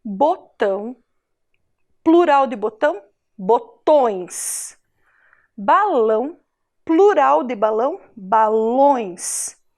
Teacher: indica som nasal o som que sai pelo nariz é como se a gente falasse com um tom fanhoso